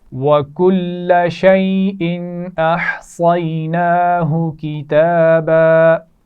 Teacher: ناہو نون پر کھڑی زبر ہے، کھینچ کر پڑھا جائے گا. کتابا تا پر کھڑی زبر ہے، کھینچ کر پڑھیں گے